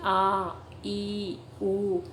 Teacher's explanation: दीर्घ स्वर है क्योंकि बोलने में अधिक समय लग रहा है अधिक प्राणवायु का उपयोग हो रहा है